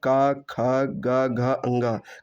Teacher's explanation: जिन वर्णों का उच्चारण करते समय जीभ का पिछला भाग हिस्सा हमारे कंठ को छूता है। उन्हें हम कंठ व्यंजन कहते हैं।